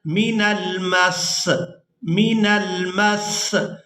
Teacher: وقف کی صورت میں ہم نے نیچے جو زیر ہے سین کے، اس کو ہم ادا نہیں کریں گے، سین کو ادا کریں گے ہم یہاں پر من المس، من المس۔ · میم کو سین کے ساتھ سختی کے ساتھ ملائیں گے، کیونکہ یہاں پر شد ہے، تو جو شد والا حرف ہوتا ہے وہ سختی کے ساتھ ادا کیا جاتا ہے۔